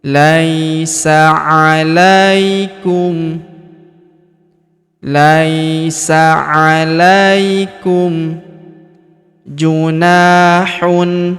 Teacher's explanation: Laisa huruf la kita ayun sekali karena terdapat ya sukun di depannya.